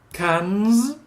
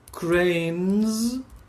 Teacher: everything that ends in the n sound when it has the plural it's pronounced Z